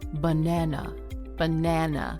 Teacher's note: The other syllables are shorter, quieter, and reduced to a relaxed sound, like an uh. We call that a schwa.